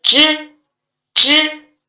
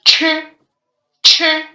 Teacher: We can feel the strong airflow touch our hand.